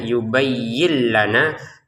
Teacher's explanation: Yin gitu ya. Nah, karena di depannya ada lam, maka nun sukunnya ini kita masukin ke lam ya. Tanpa dengungan. Jadi sehingga cara bacanya yang awalnya yubayyin, nah sekarang cara bacanya yubayyin lana.